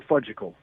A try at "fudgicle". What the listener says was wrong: The fudge-sicle? You left out a syllable.